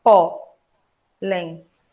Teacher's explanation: Vocês estão vendo aí que na palavra pólen, a penúltima é a mais forte. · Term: paroxítona